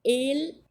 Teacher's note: El, assim mesmo, fechadinho, tá? Porque não existe essa vogal aberta nem o, mesmo quando acentuadas.